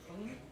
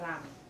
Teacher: on hum, tongue touches the roof of the mouth, and ram, it comes down, and you got a little bit of a roll in there